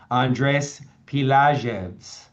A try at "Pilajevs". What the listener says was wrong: Yeah, the J is silent.